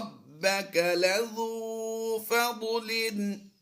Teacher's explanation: با حروف قلقلہ سے ہے اور مشدد ہے، تو یہاں پر ہم قلقلہ کرتے ہوئے پڑھیں گے